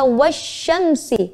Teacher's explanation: Alif lamnya tidak terbaca atau melebur pada huruf setelah alif lam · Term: Idgham Syamsiah